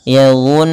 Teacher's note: Kemudian pada lafal Nun tasydid itu kita hukumnya dengan bacaan ghunah kembali tahan dulu yunnuna